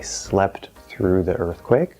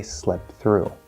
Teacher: Or we can say instead of slept through, like I slept through the earthquake, we can drop the T and say slept through